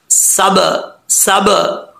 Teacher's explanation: होंठ आपस में मिले फौरन वापस लौटें। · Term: कलकला